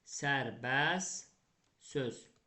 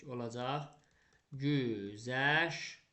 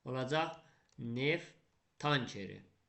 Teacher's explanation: Yəni, sonu ST, ŞT, FT, XT ilə bitən sözlərimizə götürüb samitlə başlayan şəkilçi, samitlə başlayan sözü artırsam, onda ST, ŞT, FT, XT-dakı T-lar tələffüzdə düşəcək. Məsələn, sərbəst söz, fikir verdiniz, sonu ST ilə bitən sözümüzə, sərbəst, sonu ST ilə bitib də, samitlə başlayan bir söz artırdım, söz sözünü elə artırdım. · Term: T düşəcək